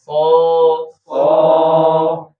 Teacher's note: Monyong enggak boleh. Harusnya adalah pangkal lidahnya yang terangkat.